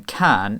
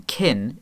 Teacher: The k in can is a velar plosive, while the k in kin is a post-palatal plosive. Because the vowel I is further forward in the mouth, the k before it also moves slightly too, becomes palatalized.